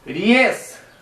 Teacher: Tá vendo que o i é quase suprimido e o e é mais forte? Então também é de ditongo crescente, porque é semivogal e depois é vogal.